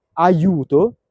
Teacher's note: quella I non è una I vocalica, non è come la I di idea, non è I, è I. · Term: la J intervocalica